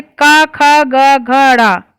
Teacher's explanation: का वर्ग हम लोग उच्चारित करते हैं कंठ से